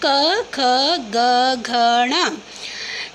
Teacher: ऐसे वर्ण जिनका उच्चारण स्थान कंठ है कंठ्य वर्ण कहलाते हैं